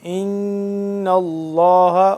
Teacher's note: ان اللہ نون مشدد ہے، اس کو ہم کیا کریں گے؟ غنہ کریں گے اس پہ